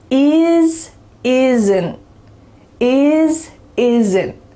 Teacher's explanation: in fast conversations, we're often going to cut off that T and make it a stopped T